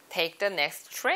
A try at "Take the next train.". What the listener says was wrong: Train 할 때 입모양 조금만 더 모아서 다시 한번 해볼게요. Take the next train.